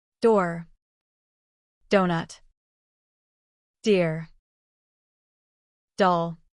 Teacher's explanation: Voice sound. Place your hand on your throat as you say D and notice the vibration. This happens because D is a voice sound.